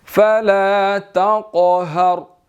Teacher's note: قاف جو ہے وہ موٹا ہے، ہم نے اس کو موٹا ادا کرنا ہے. اور را جو ہے وہ موٹا ہے، اس سے پہلے زبر ہے، اس کو بھی ہم نے وقف کرتے ہوئے موٹا ادا کرنا ہے.